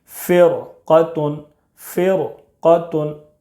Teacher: فا را زیر فر، قاف زبر قا، فر قا، تا دو پیش تن، فر قتن۔ را ساکن کے بعد حروف مستعلیہ کے 7 حروف میں سے قاف ہے، اس لیے را کو پر پڑھیں گے